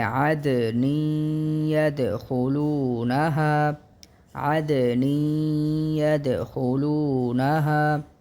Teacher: یا پر تشدید بھی ہے، اسی لیے اس پر زیادہ زور دیا جائے گا · تو یہاں پر ہم نون کی تنوین کو یا کے ساتھ ملا کر پڑھیں گے